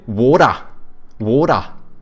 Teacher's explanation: they take like the soft D's from Americans, but they don't pronounce R's. They also say schwa like the Brits.